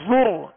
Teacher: را ساکن سے پہلے پیش, را کو موٹا پڑھیں گے